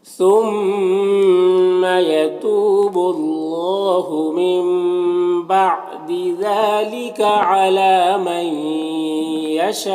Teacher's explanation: یہاں پر نون ساکن کے بعد یا ہے حروف یومن میں سے تو نون کو یا سے مدغم کر کے غنہ کے ساتھ میں پڑھیں گے، اس کو ادغام ناقص کہتے ہیں۔ یہاں پر شاہ میں جو مد ہے، یہ مد اگر یہاں پر ملا کر پڑھیں گے تو مد متصل ہوگا، اور اگر یہاں پر وقف کریں گے تو مد لازم ہوگا۔